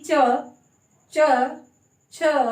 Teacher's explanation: तो इनको तालव्य वर्ण थे और इनका उच्चारण करते समय जो जीभ है, जो जीवा है, वो तालु को तो टच करती है, लेकिन साथ में एक घर्षण पैदा होता है, एक संघर्ष पैदा होता है, एक कंपन पैदा होता है, इसलिए इन्हें संघर्षी व्यंजन बोला गया।